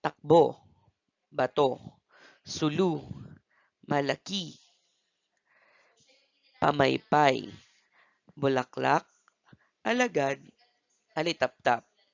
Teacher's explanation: Ito ay binibigkas ng tuloy-tuloy at may diin sa huling pantig. Tinutuldikan ito ng pahilis. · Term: mabilis